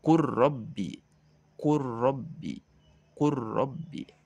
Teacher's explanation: Maka dibacanya adalah tidak kul Rabbi, tetapi dimasukkan, dileburkan ke huruf ro. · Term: idgham mutaqaribain